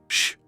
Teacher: It's not a harsh sh. It's a prolonged whisper like the sound you make to ask for silence